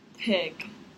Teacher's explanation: I could feel that stopping at my lips.